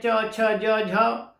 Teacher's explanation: जीभ का आगे का हिस्सा तालु पे टच करता है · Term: तालु ध्वनि